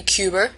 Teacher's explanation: An extra R is added to words that end with a vowel, so Cuba would be Cuber.